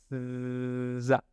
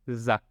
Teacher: Es como la S haciendo vibrar las cuerdas vocales.